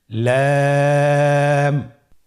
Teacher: লাম হরফটির মাখরাজ হলো জিহ্বার আগার কিনারা উপরের দাঁতের মাড়ির সঙ্গে লাগিয়ে উচ্চারিত হয়। · লাম হরফটি উচ্চারণের ক্ষেত্রে অবশ্যই বারিক হবে এবং তিন আলিফ টেনে পড়তে হবে।